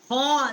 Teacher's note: ادنائے حلق جو ہے جو منہ کی طرف والا حصہ ہے ہلکا وہاں سے اس کا مخرج ہے خا کا